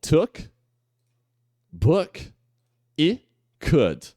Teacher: a ideia é você tentar fazer o U, mas sem fazer o biquinho. Sei lá, você pode até brincar de falar o U sorrindo.